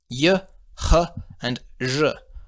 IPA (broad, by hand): j